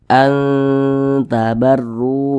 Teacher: jadi baca An tabarru begitu Jangan dibaca Ang tabarru jangan tapi dia lebih condong berbunyi n tapi disamarkan kemudian kita dengungkan suaranya itu kita tahan kita panjangkan sejenak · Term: ikhfa Hakiki aqrob